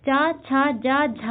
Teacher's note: जीभ का मध्य भाग हमारे तालु को स्पर्श करता है उन्हें तालव्य व्यंजन कहते हैं।